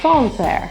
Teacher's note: The A in Sancerre is actually a little bit more rounded. So it's not Sancerre, it's Sancerre.